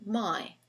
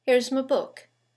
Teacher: my very clear in isolation my but in the sentence it sounds here's my book you can hardly hear it